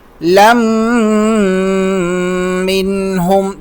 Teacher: ربنا وابعث فیہم، را موٹا، رسو، لام کو میم کے ساتھ ملائیں گے، دو زبر ختم ہو جائے گی، لیکن میم پر تشدید ہے تو اس وجہ سے ہم غنہ کریں گے، ناک میں آواز پیدا کریں گے